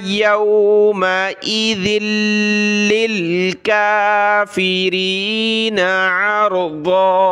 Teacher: ذال کو پہلے لام کے ساتھ پھر پہلے لام کو دوسرے لام کے ساتھ ملایا